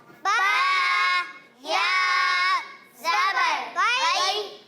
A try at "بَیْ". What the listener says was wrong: دیکھیے پیارے بچوں، بی اس طرح پڑھنا ہے نا، بی یہ لمبا ہو گیا، کھینچنا نہیں ہے ہمیں، حروف لین کو نرمی سے پڑھنا ہے، تو اس طرح پڑھیں گے باو بی۔